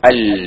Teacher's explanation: അൽ എന്ന് പറയുമ്പോ നമ്മുടെ നാവിന്റെ തല മേലെ തൊട്ടുണ്ട് അല്ലെ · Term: ഇൻഹെറാഫ്